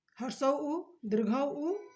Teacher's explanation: इसमें होठ निकल जाते हैं, इसलिए इसका उच्चारण स्थान ओष्ठ है।